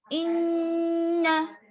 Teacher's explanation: نون کی آواز تو آئی, ان میں نون کی آواز آئی لیکن ناک میں رکی, اسی کو غنہ کہیں.